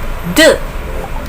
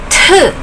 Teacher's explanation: letter is pronounced as d no heir but this letter is pronounced as tu with a lot of air